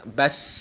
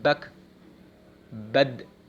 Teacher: Jadi sidah suaranya tertahan, tidak dihembuskan.